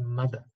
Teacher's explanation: suena como, como Damián, suena como una D, un poco más suave.